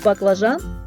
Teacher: в слові баклажан перший звук Б твердий